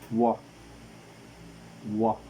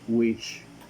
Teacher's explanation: According to voicing, the sound, it is voiced. According to the place of articulation, it is bilabial. And according to the manner of articulation, it is glide.